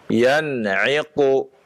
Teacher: Nun sukun bertemu dengan ain ya, idhar ya.